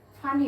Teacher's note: নোয়াখালীর লোকজন এই পকে মহাপ্রাণ ধ্বনি করে ফানি বলে এই ফ বানানটি কিন্তু এফ দিয়ে হবে না এখানে হবে পি